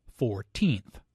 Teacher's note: The stress is on the second syllable